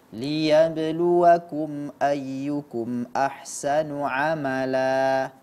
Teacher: Kemudian pada saat membaca ahsanu ala A itu namanya Mad iwad tidak perlu panjangnya lebih dari dua harakat jadi dia hanya dibaca 2 harakat saja